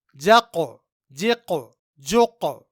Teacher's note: یہاں ان تینوں جگہوں میں ہم نے حرف قاف میں قلقلہ کیا کیونکہ قاف حروف قلقلہ میں سے ہے اور یہاں قاف ساکن ہے۔ نوٹ کیجئے کہ سب سے زیادہ قلقلہ کی آواز حرف قاف میں پیدا ہوتی ہے۔